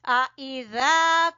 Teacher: زال کو زبان کی نوک اور اوپر والے سامنے والے دو دانتوں سے